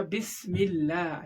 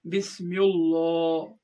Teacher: اللہ سے پہلے زیر ہے، یہاں پر اللہ کے نام کو باریک پڑھنا پڑے گا، یعنی پتلا پڑھنا پڑے گا